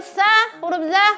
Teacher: Huruf yang keluar dari ujung lidah. Tempat menempelnya atau landasannya adalah gigi seri paling atas.